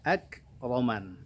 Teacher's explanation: ada hamas lagi di kaf sukunnya